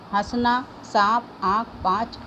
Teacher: आहा को अनुनासिक कहते हैं। इस ध्वनि का उच्चारण मुंह और नाक की सहायता से किया जाता है।